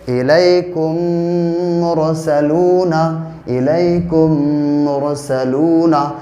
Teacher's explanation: پہلی میم کو دوسری میم سے ملا کر غنے کے ساتھ پڑھیں گے، اس کو ادغام شفوی کہتے ہیں۔